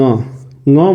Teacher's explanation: ङ कंठ से भी बोला जाता है और नासिका से भी बोला जाता है। ठीक है, तो कंठ नासिका हो जाएगा इसका उच्चारण स्थान। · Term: अनुनासिक वर्ण